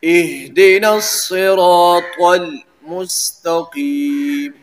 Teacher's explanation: تو اس کو بھی موٹا پڑھتے ہیں، تو اس وجہ سے صاد را الف طا ان سب کو پر پڑھنا ہے